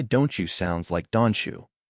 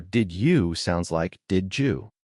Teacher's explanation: When T or D meets Y, they have a baby. And that baby is a CH or a J sound. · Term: assimilation